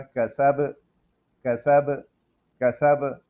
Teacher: پھر اس کے بعد کلمہ آیا تھا کسب، تو یہاں پر جو با ہے اس میں قلقلہ ہوگا